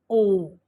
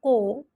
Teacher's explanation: sound ਆਉਂਦੀ ਹੈ ਓ ਸਾਡੇ ਲਿਫਸ ਨੇ ਜਿਹੜੇ ਗੋਲ ਹੋ ਜਾਂਦੇ ਐ ਇਸ ਦਾ ਉਚਾਰਨ ਕਰਨ ਦੇ ਨਾਲ ਸਾਡੇ ਬੁੱਲ ਨੇ ਜਿਹੜੇ ਉਹ